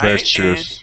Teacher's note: And that T we pronounce like a CH.